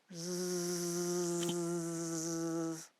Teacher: Put your tongue up near your palate behind your front teeth and voice it.